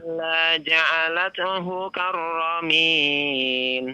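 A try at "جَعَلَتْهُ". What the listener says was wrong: Ya, huruf ta-nya jangan dikol-kola ya, biasa saja ya.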